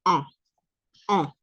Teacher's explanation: en el masculino decimos on, nasal, y es un on